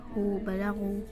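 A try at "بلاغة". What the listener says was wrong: You're saying غو. Is it غين فتحة or غين ضمة or what is it? يلا غين فتحة. غين فتحة غو or غا. بلا.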